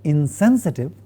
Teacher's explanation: the nasal in the negative prefix is a dental nasal